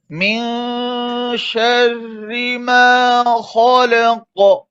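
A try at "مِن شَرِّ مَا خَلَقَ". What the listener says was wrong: सख्ती कर रहे, इतनी सख्ती नहीं कर रहे, बहुत ज्यादा सख्ती हो रही है कलकलन में।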